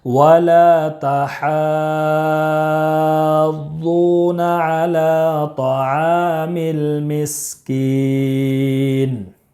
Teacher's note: حا میں مد لازم کلمی مثقل ہے، اس کو 5 الف کے برابر کھینچ کر پڑھیں گے۔ ضاد میں واو مدہ ہے، اس کو بھی 1 الف کے برابر کھینچ کر پڑھیں گے۔ لام میں کھڑا زبر ہے، اور کھڑا زبر برابر ہوتا ہے الف مدہ کے، اس لیے 1 الف کے برابر کھینچ کر پڑھیں گے۔ · لام میں الف مدہ ہے، اس لیے 1 الف کے برابر کھینچ کر پڑھیں گے۔ حا میں مد لازم کلمی مثقل ہے، اس کو 5 الف کے برابر کھینچ کر پڑھیں گے۔